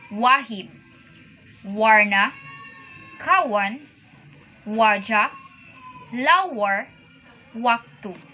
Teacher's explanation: The Malay W differs from the W in English, as it is pronounced with much less rounded of the lips.